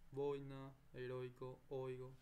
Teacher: el fuerte es la O y la débil es la I. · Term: diptongo